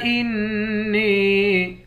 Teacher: نون کو یا کے ساتھ ملا کر یا کو ایک الف کی مقدار کھینچیں گے